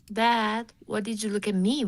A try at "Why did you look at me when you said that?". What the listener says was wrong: The Y needs to sound a little more Y. Right now, it kind of sounds like W.